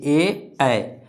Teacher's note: और ऊ बोलिए, ऊ ऊ ऊ क्या ओष्ठ से हो रहा है, तो उच्चारण स्थान क्या है ऊ, और पा वर्ग का उच्चारण स्थान क्या है ओष्ठ, याद रह जाएगा। अब देखिए ए ये क्या होगा, कंठ और तालु दोनों से उच्चारण होगा, ए तो ये दोनों याद रखना, ए कंठ और तालु से, इसका उच्चारण स्थान क्या है कंठ और तालु।